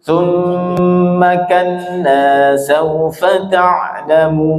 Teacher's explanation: Summa itu mimnya tasdid dan pendek, jangan sampai summa kalla, ma-nya pendek ya, tapi dengung karena ada tasdid